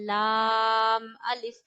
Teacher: लाम अदा होता है आपके ऊपर वाले दांतों के मसूड़ों से, यानी जो ऊपर के दांत हैं उनकी जड़ों के साथ जो नरम मांस है वहां जबान लगानी है और लाम पढ़ना है, लाम अलिफ।